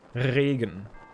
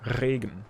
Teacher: Like in Germany, we usually roll the R more.